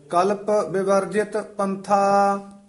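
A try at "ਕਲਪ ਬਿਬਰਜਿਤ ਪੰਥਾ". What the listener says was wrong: इसनु विवर्जित नहीं कहना बब्बे तू चक के बोलना है डैश जी दे के कल्प विवर्जित पंथा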